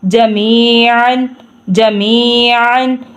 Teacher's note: انہو هو التواب الرحیم هو التواب الرحیم قلنا اهبطوا قلنا اهبطوا منها منها جميعا جميعا، اب یہ عین ہے تو عین کی طرح ہی اس کو پڑھنا ہے، جیسے میں نے نورانی قاعدے میں پڑھایا ہے کہ عین کو ہم نے موٹا پڑھنا ہے اور ایک الگ اس کی آواز نکالنی ہے